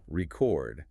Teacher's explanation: If I stress the second syllable record, it's a verb. It's the action of recording sound.